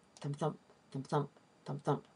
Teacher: In the case of an iamb, that pattern is really simple. It's just one unstressed syllable followed by one stressed syllable.